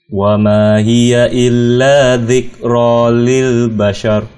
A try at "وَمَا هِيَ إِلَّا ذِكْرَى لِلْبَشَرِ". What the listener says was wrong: Jangan pada kafnya, tekan illa dzikra. Sya-nya tipiskan dulu, baru ra-nya tebalkan. Jadi sya tipis, tebal.